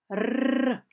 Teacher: ви відчули як вібрує піднятий верх язик